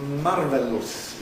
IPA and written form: ˈmɑrvelus (marvelous)